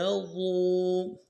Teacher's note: واو مدہ ہے، اس کو کھینچیں گے ایک الف مقدار میں